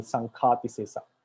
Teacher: we find the ka is pronounced as ga, and ga is pronounced as ka normally. So instead of sangadi sesa, they call sankati sesa.